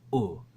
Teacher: I think it's a back rounded vowel